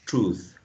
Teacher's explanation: When you say truth, right, you want to make this with a long oo